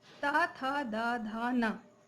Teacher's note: ता वर्ग के वर्णों का उच्चारण स्थान है दंत। ता, था, दा, धा, न इन व्यंजनों के उच्चारण में मुख से निकलने वाली वायु दंत को स्पर्श करती हुई बाहर आती है।